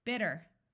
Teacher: Americans tend to substitute a D sound for the T sound